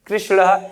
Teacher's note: इसी तरीके से कृषधन नह, क्या है, कृषधन नह, तो जब कृषधन न है तो इस न का परिवर्तन, इस वाले न का परिवर्तन अण में हो जाएगा और बन जाएगा कृष्ण।